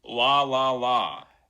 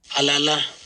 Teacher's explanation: what's going to happen with a velarized L is we should see lower F2 than we do when it's not velarized or when it's a clear L